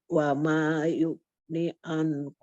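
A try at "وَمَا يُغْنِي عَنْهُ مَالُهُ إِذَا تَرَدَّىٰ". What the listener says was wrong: itu dua harokat. Wa ma yugni anhu ma. Ini dua harokat. Wa ma yugni.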